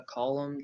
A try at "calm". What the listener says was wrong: can be a column. I think the candidate's saying calm, but column.